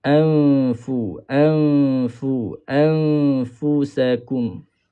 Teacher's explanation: Bila kita dengungkan di sini, ikhfa hakiki, mulut kita dah bersedia kepada makhraj fa.